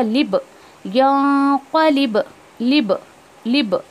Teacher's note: बा पे कलकला होगा, लिब यांक़लिब, लिब लिब, तो ये आवाज़ में एक टकरार लग रही है आपको, टकराव, वो उसको कलकला कहते हैं, रिपीटेशन ऑफ साउंड